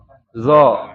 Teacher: Makrojnya ujung lidah menyentuh ujung gigi seri atas. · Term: Huruf zo